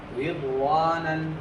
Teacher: را کے نیچے زیر را باریک ہوگی